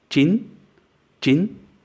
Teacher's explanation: It's not an I as in jin or E as in jean, but it's in the middle. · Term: I sound